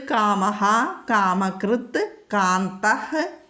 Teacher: അപ്പോൾ ജിഹ്വമൂലീയം വന്നിരിക്കുന്നു. വിസർഗസ്ഥാനത്ത് നമ്മൾ ഹ ചൊല്ലണം. കാ വന്നതുകൊണ്ട് വിസർഗം കഴിഞ്ഞിട്ട് കാ വന്നാൽ നമ്മളവിടെ ഹ ചൊല്ലുക.